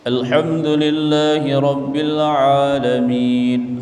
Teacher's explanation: bukan A di dalam mulut, tapi A di tengah tenggorokan